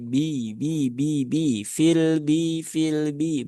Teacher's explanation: Jadi ba sifatnya dia tidak ada ee ikutan tidak ada aliran nafas aliran udara yang keluar bersama dengan suara huruf ba itu sendiri